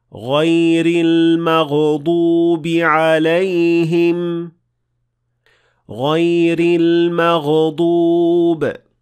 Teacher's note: The third mistake is adding qalqala to ghain